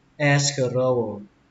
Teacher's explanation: Lên giọng âm đầu tiên